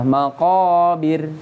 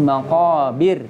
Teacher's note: bacanya bacaan tarqiq. Karena apa? Ro-nya waqaf didahului dengan huruf yang berharokat kasroh.